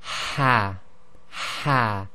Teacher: Now the next one, we've called it the throaty ha, and it comes from the middle of the throat, and its closest equivalent in English is heart. · the ha itself is produced by squeezing the muscles which are around your windpipe. So you constrict the windpipe to get this sound out.